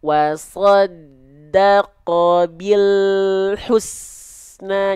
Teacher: Kenapa huruf lam ketika sukun suka memantul karena makhraj lamnya keburu turun duluan sedangkan huruf berikutnya tak langsung kita lafalkan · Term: lam sukun